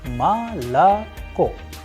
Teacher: because o is not under stress is going to turn into a sound of AA